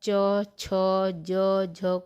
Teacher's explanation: च वर्ग के प्रथम चार व्यंजन अर्थात च छ ज झ को स्पर्श संघर्षी व्यंजन कहते हैं